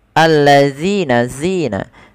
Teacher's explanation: ada bacaan mad thabi'i yaitu pada lafal zina panjangnya kita panjangkan dua harakat karena dia ada huruf ya sukun yang dialung dengan huruf kasrah.